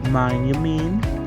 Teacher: The fall starts on mine, and the rise finishes on me